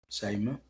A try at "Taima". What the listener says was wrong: Taima with T.